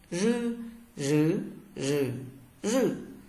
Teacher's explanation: R cong lưỡi và dây thanh rung nhé.